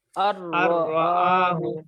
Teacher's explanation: তাসদিদ দিয়ে মিলে গুন্না ছাড়া পড়তে হয়, এর নাম হচ্ছে ইদগাম বেলা গুন্না